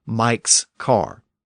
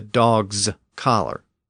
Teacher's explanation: the s ending in Mike's car or the Z or Zed ending in the dogs collar